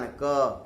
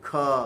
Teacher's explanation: एक अल्प प्राण क, कम ध्वनि, फिर एक महाप्राण ख